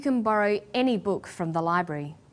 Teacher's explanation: When the word any is stressed, this tells us that we're talking about an unrestricted quantity or unlimited choice.